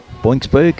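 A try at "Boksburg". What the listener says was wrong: Boxberg. Yeah. There's no N in there. How did you get boinks? Box, as in Springboks. Boxberg.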